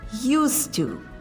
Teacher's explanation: But when we say used to, then it doesn't have the Z or the D sound. It's pronounced with an unvoiced S or S, which merges with to without any D sound.